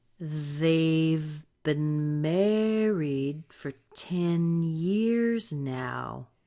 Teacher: married is probably the strongest word and years is the second one